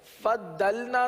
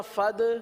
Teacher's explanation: ضاد کے اندر جماؤ کریں گے، صفت استطالت کی وجہ سے یہ اس طریقے سے ادا ہوتا ہے